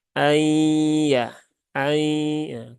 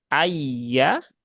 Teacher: Ketika ay, nah, di sini kerasa ya ada sesuatu yang melewati rongga hidung. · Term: idgham bigunnah